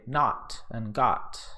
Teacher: in my accent we would pronounce these like the previous sound, the /a/ sound